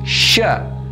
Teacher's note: Sya ini makhrajnya adalah di tengah lidah bertemu dengan langit-langit di atas